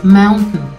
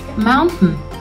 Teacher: Sí, así como lo escuchaste, mountain. Básicamente no pronunciamos el final de la palabra. A esta parada se le llama glottal stop.